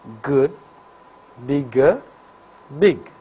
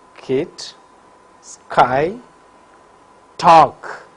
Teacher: So, G is voiced velar plosive, while K is voiceless velar plosive.